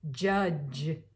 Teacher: the voiced affricative consonants, starting with a D, and then followed by j. You have j, judge.